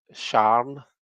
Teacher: Glaswegians often say Sharn, so it's like they make it one syllable. And it's just a kind of a slang way of saying it. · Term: very Glaswegian thing